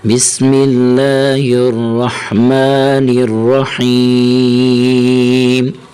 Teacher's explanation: نون زیر را نر، را زبر را، نر را، حیا زر حی، نر رحی، میم زیر می، نر رحیمی۔ جب وقف کریں گے میم پر تو میم کو ساکن کر دیں گے